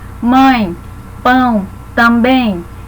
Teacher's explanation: O ditongo pode ser nasal. O som, obviamente, sai pela boca, mas uma parte do ar ele escapa pela cavidade nasal, tornando aquele som mais fechado.